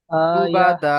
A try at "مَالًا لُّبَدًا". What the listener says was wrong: না সাকিন হবে না তো, এখানে টান হবে তো।